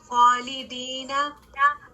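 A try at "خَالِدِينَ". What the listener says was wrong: اور ہیوی کریں خواہ کو, خالدینہ.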